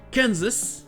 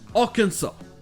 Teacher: Dans Kansas, le can était accentué. Mais là, le can, K-A-N, dans Arkansas, c'est la partie qui est non accentuée.